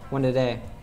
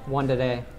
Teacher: Because for me, since it's had one before it, I said, one today. So I made that first T into an American T. So it sounds like a D